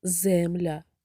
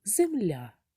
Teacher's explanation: в слові земля наголос падає на другий склад а перший склад є ненаголошеним